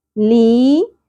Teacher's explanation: یا ساکن حرف مدہ ایک الف کے برابر کھینچیں گے